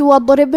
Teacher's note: کلمت وَاضْرِب میں شروعات میں الف ہے لیکن یہ حمزۃ وصل ہے تو ہم حمزہ کو ظاہر نہیں کریں گے، واو کے بعد حرف الضاد کو پڑھیں گے. ضاد کی ادائیگی زبان کے کروٹ اور اوپر کے داڑھوں کے جڑ سے ہے